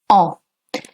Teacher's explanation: for saying we in spoken French it's ah with a nasal sound